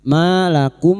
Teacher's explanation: fathah diikuti alif dua harakat mad thbi'i maum mim sukun bertemu Mim idgham mimi memasukkan atau mentasdidkan dua mim. Masuk pada huruf mim berikutnya disertai mendengung